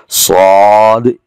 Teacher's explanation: صاد اس حرف کی آواز موٹی ہو رہی ہے، زبان اوپر تالوں کی طرف اٹھ رہی ہے۔